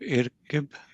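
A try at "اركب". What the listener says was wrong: will still have a fatha, right? So irkab.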